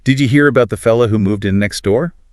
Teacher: that characteristic upward inflection at the end of sentences even when it's not a question · You can really hear how the becomes duh, and that rising tone at the end of next door.